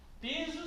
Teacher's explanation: regra particular porque não pode ser qualquer palavra de duas sílabas precisa necessariamente ter mais força a sílaba Inicial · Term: paroxítona